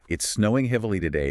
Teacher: the pitch drops, the thought is sealed